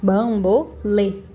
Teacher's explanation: O lê é o que a gente vai falar mais forte. O lê termina com E. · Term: sílaba tônica